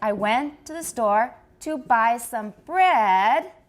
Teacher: finished we go high if we're finished we go down but if we're not finished we start high go down and then come up a little bit with a continuation rise